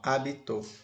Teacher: A sílaba tônica agora está na última sílaba.